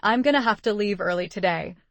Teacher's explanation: the stressed words are leave, early today. Those three words give you the core meaning.